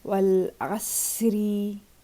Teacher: in a continuous state of reading, Ra will be pronounced lighter because it has a Kasra on it, like Wal Asri.